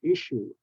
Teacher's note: issue two s's have the sh sound